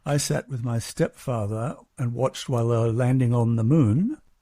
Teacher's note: Some major words there that were stressed more than others were landing and moon.